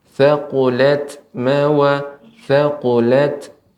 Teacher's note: untuk tak sukun ini juga harus diberikan aliran udara hamsnya, sifat hamsnya.